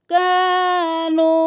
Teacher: ولیکن، نون ساکن ہے غنہ، ولیکن کانو نہیں، الف مدہ، کانو، مد ہے 5 انگلیوں کے برابر کھینچے